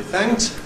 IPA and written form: θæŋt (Thanked)